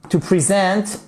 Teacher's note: on a l'accentuation qui est sur la seconde syllabe